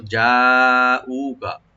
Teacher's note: যাকে আপনি চার আলিফ টানতে হবে। আর হামজার পর যে ওয়ার্ড সেখানে এক আলিফ টানবো, কাফে কোনো টান নাই।